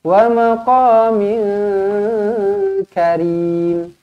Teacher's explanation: Tanwin bertemu dengan kaf, ikhfa hakiki, dengungkan 2 harakat.